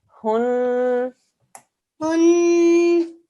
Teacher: It's a noon mushaddad, 2-second nasal sound.